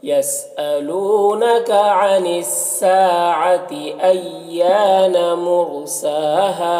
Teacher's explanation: یسألونک یہاں پر لو میں واو مدہ ہے، عن الساعتی سا میں الف مدہ ہے، ایانا یہاں پر بھی الف مدہ ہے، مرساہا رائے ساکنہ سے پہلے میم کے اوپر پیش ہے تو را کو پر پڑھیں گے، سین میں کھڑا زبر ہے جو الف مدہ کی طرح ہوتا ہے، اور یہاں پر ہا میں بھی الف مدہ ہے تو 1 الف کے برابر کھینچیں گے اس طرح سے۔